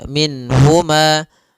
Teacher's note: Nun di sini harus jelas karena bertemu dengan huruf ha, maka tidak boleh ditahan. Misalnya ditambah dengan gunnah min huma, ini enggak boleh.